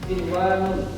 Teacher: walaupun ada nun mati bertemu ya, tapi dia dibaca jelas, tidak dengung seperti hukum idgham bigunnah · Jadi ada pengecualian untuk empat kata ini saja. Sinwanun, nun mati bertemu waw. Harusnya kalau mengikuti hukum idgham bigunnah ini dengung, tapi karena pengecualian dibaca jelas.